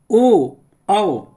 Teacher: ओ औ कंठ और ओट से